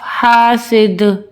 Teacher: وقف کی صورت میں ہم دال پہ قلقلہ کریں گے کیونکہ یہ حروف قلقلہ کا ورڈ ہے.